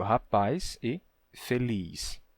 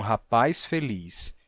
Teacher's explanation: em vários sotaques do português como é o caso do meu sempre que você tem uma vogal tônica final seguida do som de s Então você tem um alongamento